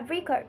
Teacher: When used as a noun, we say she want to buy a record with the stress on the first syllable. But when it's a verb, we say she wants to record record her speech with the stress on the second syllable.